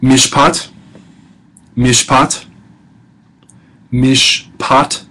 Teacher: the shabba in mishpot is silent, not vocalized because it closes a syllable